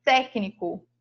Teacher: sílaba tônica é a antepenúltima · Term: proparoxítona